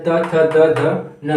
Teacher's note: जो दांत से जब बोलते हैं तो दांत उसमें उपयोग होता है